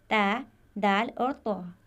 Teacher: जबान की नोक जब सामने वाले यानी सनाया उलिया की जड़ों पर लगे तो ये तीन हर्फ अदा होंगे